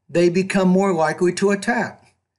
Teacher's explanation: In that the last time I read it, I was trying to put a slightly higher pitch at the end of each thought group. And once I got to the end of the sentence, my tone fell. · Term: falling tone